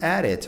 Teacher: um som de T, o T ou D, depois junto com uma vogal, vai ter o som de R, como R no Brasil de caro